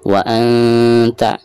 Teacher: Baik, perhatikan di sini ada nun sukun atau nun mati lalu berhadapan dengan salah satu huruf ikhfa di sini huruf ta, maka cara membaca nun sukun tersebut itu harus disamarkan ya